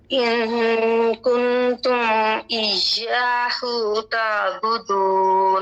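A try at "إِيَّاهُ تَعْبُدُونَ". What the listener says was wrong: ایاہو اس کو لمبا نہیں کریں گے ہا کو، کیونکہ آگے واو نہیں ہے. ہا کے اوپر صرف ایک پیشہ، ایاہ تعبدون.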